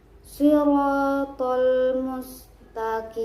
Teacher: ada sin yang mempunyai sifat hamas dan sofir